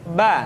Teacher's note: dikeluarkan dengan cara merapatkan kedua bibir kita